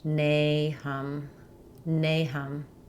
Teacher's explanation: In Nahum, we have first syllable stress, and letter A says the A sound.